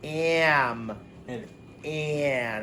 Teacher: It sounds kind of whiny when it's with the M and the N.